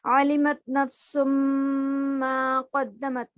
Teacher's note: نفسم میں جو ہے ناک میں آواز ہماری روکنا ہے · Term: غنہ